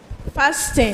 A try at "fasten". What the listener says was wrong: The correct pronunciation of that word is fasten, okay? The T is silent. Just as we have listen and not listen, we don't sound the T. So it's fasten.